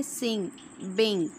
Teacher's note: क्या हैं सिंग बिंग ठीक है इंक की साउंड देते हैं ये भी वॉइस्ड हैं वेलर हैं और नेजल हैं